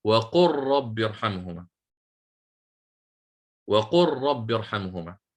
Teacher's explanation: اللام صيرتها راء ساكنة فصارت وقر، ليست وقل. ثم أدغمتها، ثم أتيت بالراء التي بعدها المفتوحة فصارت وقر ساكن متحرك، هذا هو المشدد. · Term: الإدغام الصغير